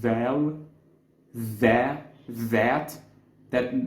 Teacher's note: this pronunciation when you place your tongue between your teeth and make it vibrate a little bit